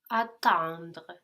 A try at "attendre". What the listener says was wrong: So emphasizing much more the en, no, and the accent does fall there as well, will help you fall into the next sound. You're concentrating on the next sound, no, the DRE, which is making you pronounce it too much. So concentrate much more on the en in the middle, attendre, and try to fall into the